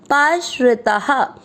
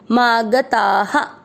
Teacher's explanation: आ की मात्रा ता में तो विसर्ग को पढ़ेंगे हा